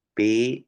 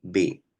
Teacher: se hablan de estos fonemas como consonantes oclusivas bilabiales una sorda y otra Sonora